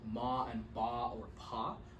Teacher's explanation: involve just pressing the lips together and apart